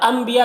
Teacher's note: نون ساکن کے بعد با ہے تو نون کو میم سے ملا کر غنہ اور اخفاء کے ساتھ میں پڑھیں گے، اسے اقلاب کہتے ہیں۔